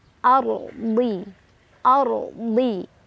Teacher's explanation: Ar rnya dibaca secara tafkhim karena ro sukun sebelumnya ada huruf berbaris fathah